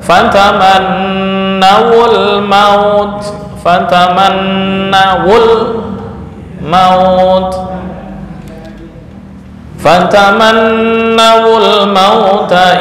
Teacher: Tapi jika harokat sebelumnya adalah fathah, fataman nau, fataman nau ul maut, mauta. Nah, ini sukun bertemu dengan sukun, maka wawu diberikan harokat penolong dhammah